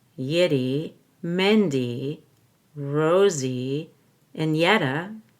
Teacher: I go down, up on Yiddy, and then I go up, down, up on Mindy.